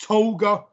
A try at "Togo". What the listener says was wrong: how do you mispronounce togo as toga